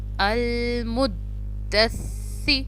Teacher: सा को भी ज़बान की नोक से, टिप ऑफ द टंग जो है हमारी ज़बान की नोक वो सामने वाले दांतों के बीच में आएगी।